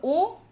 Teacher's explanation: कंठोष्ठ यानी कंठ और ओठ